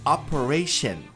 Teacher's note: esse o ele é longo. Ele é forte e longo. Por isso que eu coloquei dois com acento agudo.